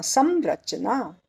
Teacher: स के ऊपर अनुस्वार, आगे आया रचना का र, तो उसका अनुनासिक होगा म